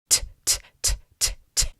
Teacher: Once again, it's not vibrating. That's because /t/ is a voiceless sound.